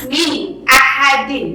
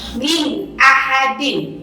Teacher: nun mati atau nun sukun menghadapi hamzah, jadi harus jelas nunnya. Min ahadin, ya, jadi bukan min ahadin atau min, nah nggak boleh. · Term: idhar